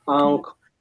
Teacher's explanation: मुंह, mouth and नोज दोनों से इसमें से एयर पास होता है। अनुस्वार में केवल साउंड जो है या एयर जो है वो हमें केवल नाक से आती है, मुंह से नहीं आती, क्योंकि मुंह में कुछ हर्डल महसूस होता है, कुछ प्रॉब्लम, ऐसा लगता है कि कुछ अंदर से कंजेशन हो रहा है। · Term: अनुनासिक नेसल साउंड्स